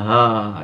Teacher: Persis bentuk lisannya dibuka, sama dengan mengucapkan hamzah. Cuma bedanya nafasnya. Belum apa-apa sudah lepas nafasnya.